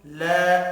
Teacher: الف کے اوپر چھوٹی مد ہے، 3 الف کے برابر کھینچ کر پڑھیں گے، حرکات کھینچ کر نہیں پڑھی جائیں گی۔